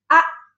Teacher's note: I am closing the two vocal cords. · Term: Hamza